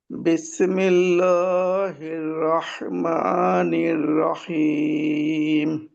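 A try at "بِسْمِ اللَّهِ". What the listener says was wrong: জি, সিনের মাখরাজ থেকে আলাদা হওয়ার সময় বাড়তি একটা আওয়াজ হচ্ছে, ওইটাকে কমাইতে হবে। অর্থাৎ বিস স এরকম না হয়ে নরম ভাবে আওয়াজটাকে মিলিয়ে যেতে হবে। অর্থাৎ বিসমিল্লাহ, বিসমিল্লাহ, এভাবে।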